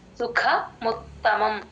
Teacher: సుఖ క కి మహాప్రాణం ఉందండి